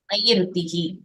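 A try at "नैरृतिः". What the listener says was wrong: இத வந்து ரூன்னு படிக்க கூடாது, ரு அப்படின்னு படிக்கணும்.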